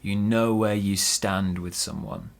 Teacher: So we stress know and stand.